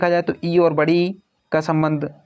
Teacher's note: स्वरों में, 'इ' और 'ई' तालु से संबंधित होते हैं।